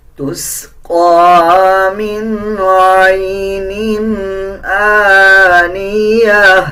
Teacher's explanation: قاف کے اوپر کھڑا زبر ہے، 1 سیکنڈ لمبا کر کے پڑھا جائے گا